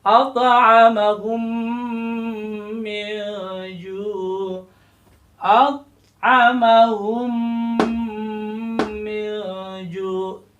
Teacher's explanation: lebur mim dengan mim, jadi seolah-olah padahal ada dua mim di situ, tetapi karena dilebur disatukan menjadi satu mim, tapi dipanjangkan. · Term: idgham syafawi